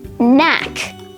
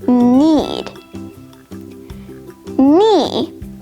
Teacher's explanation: of actually sort of gets rid of the k sound so k n is just pronounced like the n sound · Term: silent k